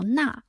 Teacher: The Chinese syllable na here consists of the initial consonant n, the final vowel a, and the falling tone